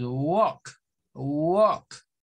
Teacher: Entonces decimos walk, walk. Como que la L no sonara, pero es por esa mezcla entre A y L. Vea, cuando la A y L se encuentra en esa posición en las palabras en el inglés, suena más a una especie como de walk, talk.